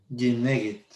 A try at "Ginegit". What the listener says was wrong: Sonó una N ahí de más.